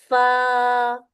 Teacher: اب یہاں پر اس الف کو پتلا پڑھیں گے، اس کو فو نہیں کرنا